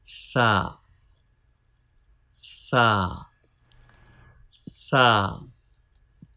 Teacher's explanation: This is tip of tongue. Start using tip of tongue touching with edge of front teeth.